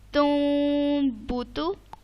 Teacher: نون ساکن کے بعد آ گیا با. تو میں نے اس کی آواز کو چینج کر دیا میم میں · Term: اقلاب